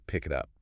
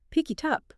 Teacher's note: The T sound in it jumps to the front of up. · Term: Catenation